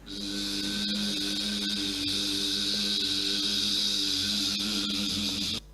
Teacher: la S va a ser sonora, es decir, aquí van a estar vibrando las cuerdas vocales. Cogemos aire por la nariz y emitimos una S sonora.